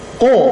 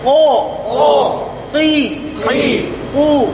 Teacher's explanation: Nah, huruf qaf itu, ya, pangkal lidahnya naik, kemudian menyentuh daging yang itu, ya.